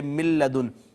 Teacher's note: نون اور لام دونوں قریب المخرج ہیں، قریب قریب سے ادا ہوتے ہیں، پہلا ساکن ہے دوسرا متحرک ہے، تو ہم پہلے کو دوسرے میں ضم کر دیں گے۔ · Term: ادغام متقاربین